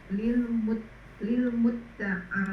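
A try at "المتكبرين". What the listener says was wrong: Tanpa tasdid ditanya mutafa'il, wazan tafa'ala yatafa'al, ini isim fa'ilnya. Enggak ada tasdid. Muta'alin.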